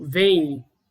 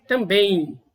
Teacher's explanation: na palavra vem, que é uma sílaba única, a letra M ela tem um som de I, um I fonético, vem. E da mesma forma, em também, eu também tenho uma letra M aqui, essa letra final M aqui, com som de I também.